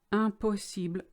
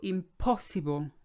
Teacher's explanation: All the syllables are on the same height, the same weight, if you like.